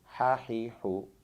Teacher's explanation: हा का मखरज है वस्ते हलक, यानी हमारी जो गर्दन का सेंटर बनता है यहाँ से हा अदा होता है। मखरज के एतबार से इसे हल्किया कहते हैं।